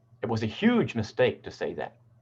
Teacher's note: So here we're putting the emphasis onto the word huge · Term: general emphasis